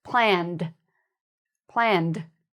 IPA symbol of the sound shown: d